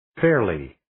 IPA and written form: ferliː (Fairly)